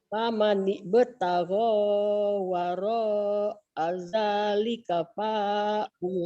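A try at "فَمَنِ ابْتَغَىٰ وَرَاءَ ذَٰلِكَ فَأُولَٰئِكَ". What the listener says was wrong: Pa-nya pendek, paula. Pa-nya pendek ya Bu.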